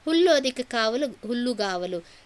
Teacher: ಕ ಬದಲಾಗಿ ಗ ಅನ್ನುವಂತದ್ದು ಬಂತ್ರಿ ಆದೇಶ ಸಂಧಿ ಮತ್ತೆ ಇದು ವ್ಯಂಜನ ಸಂಧಿ ಅನಿಸಿಕೊಳ್ಳುತ್ತದ ಹುಲ್ಲು ಲು ಅನ್ನುವಂತಹ ವ್ಯಂಜನಾಕ್ಷರದ ಮುಂದೆ ಕನ್ನುವಂತಹ